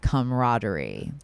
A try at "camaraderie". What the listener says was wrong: Say comma. I feel like you're hitting it hard at camaraderie. Yeah, but it's like subtle.